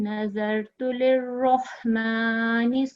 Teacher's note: را کے اوپر تشدید ہے, اس لیے ہم پچھلے لفظ کو اس کے ساتھ جب ملائیں گے تو تھوڑی سی مضبوطی آنی چاہیے